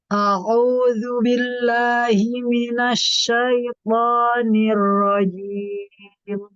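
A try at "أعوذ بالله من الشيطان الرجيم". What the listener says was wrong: A'udzu, ain, a'udzu. Toknya tebalkan sedikit lagi. Asyaitonir rajim. To, to.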